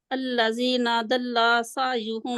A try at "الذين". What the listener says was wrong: الذين نون کو کھینچنا نہیں ہے